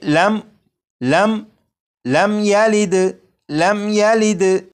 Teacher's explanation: جب میم ساکن کے بعد یا ہے تو اس میم ساکن میں بھی غنہ نہیں کریں گے